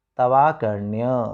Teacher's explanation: व में अ है और सामने आ है, तो मिलकर क्या बनेगा, आ बनेगा। तो उत्तर क्या बन जाएगा, तवाकर्ण्य।